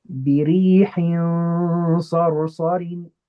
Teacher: I'm going to eliminate the tongue component, and I'm only going to use the nasal component. I'm going to make my ghunna heavy, and I'm going to place my tongue in a way that it's ready to go straight into that slide. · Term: إخفاء